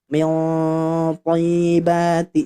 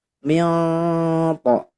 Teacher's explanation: Baik, selanjutnya yang ini yang saya buletin lagi itu ketika dengung karena nun sukun bertemu hurufnya huruf tebal, huruf to. Berarti ini ikhfanya tebal.